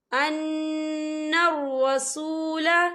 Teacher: یا نون مشدد ہے، تو یہاں پر غنہ ہوگا